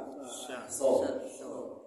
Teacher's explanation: Huruf shad pangkal lidah naik, itu saja.